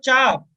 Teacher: आपकी जुबान, आपकी जिह्वा जो लग रही होगी वो दांत से पिछले वाले हिस्से पर